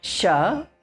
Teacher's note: that sha which is pronounced from talu. It is like she is going, that one, sha. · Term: talavya sha